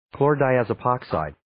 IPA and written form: ,kloʊrdaɪ,æzə'pɑːksaɪd (Chlordiazepoxide)